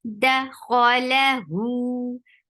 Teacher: The sound is very sharp, short. Da kho is heavy, la short. Hu 2 counts long.